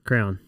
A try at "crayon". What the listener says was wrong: You said crown. Are you one of those crayon people? This is like California moment. It sounded like you said crown.